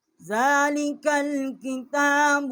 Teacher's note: ذال جو ہے اس کے اوپر کھڑی زبر ہے، 1 الف جتنا یہاں آواز بلند کی ہے